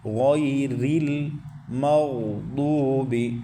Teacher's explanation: غوئی ریل، مغضوب، میم کو باریک پڑھیں، غین کو پر پڑھیں، اور غین ساکن ہے، اس کے اوپر قلقلے کی بعض دفعہ تشبیہ آ جاتی ہے تو قلقلے سے یہاں بچنا ہے، مطلب کہ غین کو ہلانا نہیں ہے